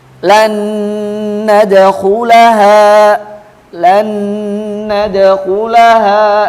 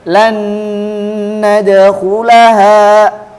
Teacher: Huruf nun sukunnya masuk langsung ke huruf berikutnya dan didengungkan. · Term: idgam bikunah